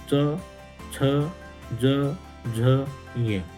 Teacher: यशानाम, यह मतलब यकार, श, इन सबका उच्चारण स्थान कहाँ से होता है? तालु से, और इसलिए इनको तालव्य वर्ण कहा जाता है।